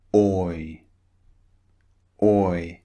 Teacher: Remember, oi starts rounded and finishes slightly wide on the mouth.